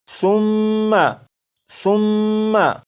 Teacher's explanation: اسی طرح یہ جو لفظ ہے اس لفظ میں یہاں پر یہ میم مشدد ہے تو اس لفظ کو جب پڑھیں گے تو میم مشدد میں غنہ کریں گے